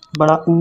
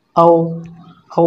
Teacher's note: वृत्ताकार स्वर वो होते हैं जिन स्वरों को उच्चारण करते समय होंठ गोल होता है, गोल हो जाता है।